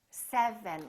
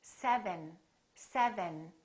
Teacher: first my lower lip is touching my upper teeth and then my tongue is touching right behind my upper teeth